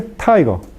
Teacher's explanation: Hay gran diferencia entre tigre y tiger. Cuando usted pronuncia tiger, en inglés, el ápice de la lengua no toca los dientes superiores, sino el ápice de la lengua toca la región alveolar.